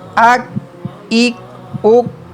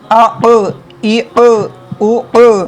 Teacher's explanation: دیکھیں کہ first line میں 2 کاف ہیں، لیکن یہ جو کاف ہے اس کو باریک پڑھتے ہیں، اور یہ جو قاف ہے 2 نقطوں والا اسے ہم لوگ موٹا تھک ریڈ کرتے ہیں، کیونکہ قاف حروف مستعلیہ میں سے بھی ہے اور قاف میں قلقلہ بھی ہو رہا ہے۔